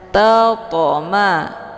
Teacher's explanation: Cara bacanya, to-nya dipantulkan dengan pantulan ringan. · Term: qalqalah sughra